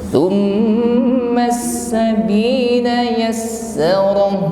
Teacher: sin ditasydid maka hamasnya lebih terdengar jelas